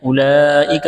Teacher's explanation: یہ لمبی مد ہے، اس کو 4 الف کے برابر کھینچنا ہے